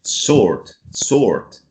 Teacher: in american english they will pronounce the r definitely